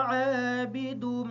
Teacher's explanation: عین کو تھوڑا سا لمبا کریں گے تاکہ یہ الف ادا ہو جائے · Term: الف مدہ